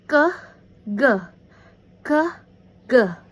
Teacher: Ke and ge sound are made by raising the back of the tongue toward the soft palate, called velum, held tightly enough to block the passage of air. Ke is a plosive velar voiceless and ge is a plosive velar voice.